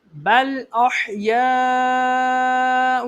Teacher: یہاں پر حروف مدہ کے بعد حمزہ اسی کلمے میں مد متصل 2 اڑائی الف کے برابر، اس کو کھینچ کے پڑھیں گے